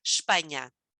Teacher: we barely say that e at all and that s becomes the sh so it becomes spanish we don't even have to say the